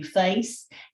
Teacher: another southern feature is swapping of the vowels in words like face and dress where face lowers and centralizes to face and dress can raise and front towards dress it